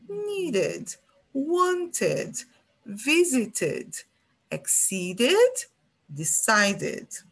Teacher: Quando o verbo terminar em D ou T, o som vai ser um id, bem curtinho. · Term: som de id